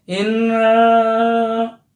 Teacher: Makhorijul hurufnya tidak dari hidung, tetapi ini termasuk huruf lisan sebenarnya, lidah ya. Tetapi ketika nanti huruf nun bertanda tasdid itu akan terjadi gunnah, dengung. Seolah-olah nanti ada yang dari khaisum, hidung.